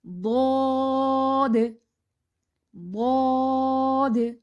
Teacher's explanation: ضاد پڑھتے ہوئے بھی اینڈ پہ کلکلا ہوگا